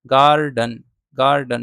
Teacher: गार्डन, गार्डन two syllable है, इसमें पहले सिलेबल पे स्ट्रेस है और दूसरा वाला अनस्ट्रेस्ड है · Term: ट्रोशी